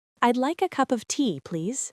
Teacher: Cup of becomes cuppa. This is a very common reduction in spoken English.